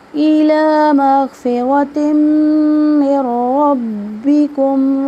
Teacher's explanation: میم مشدد کا غنہ کریں گے یعنی ناک میں آواز لے کے جائیں گے